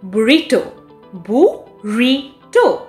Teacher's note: the second syllable receives stress here